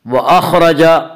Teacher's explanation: خا کو پر پڑھیں گے، خا حروف مستعلیہ میں سے، حروف مستعلیہ 7 ہیں جن کا مجموعہ خصہ ضغط نقض ہے جو ہمیشہ ہر حال میں پر پڑھے جاتے ہیں۔